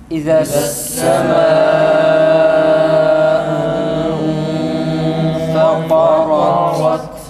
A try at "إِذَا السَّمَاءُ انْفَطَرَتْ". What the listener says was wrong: Medi mutasını tam uzatalım arkadaşlar.